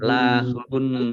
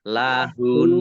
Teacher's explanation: Jadi nunnya mendengung ditahan, ya, kira-kira 2 harokat. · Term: nun tasdid